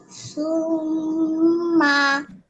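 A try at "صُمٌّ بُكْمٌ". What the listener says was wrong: কই পেশ আছে তো, সুম্মু বুকমুন এখানে গুন্না করলাম আমরা সুম্মু বুকমুন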